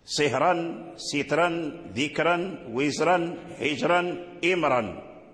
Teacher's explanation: فالذي نقرأ به لورش هو التفخيم في هذه الألفاظ كلها